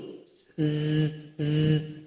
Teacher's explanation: dia punya sifat safir seperti bersiul.